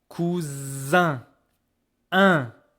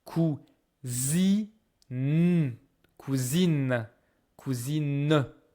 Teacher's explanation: E, N together, they really make just one vowel. You don't hear the N anymore. It's not cousin, cousine, or I don't know what.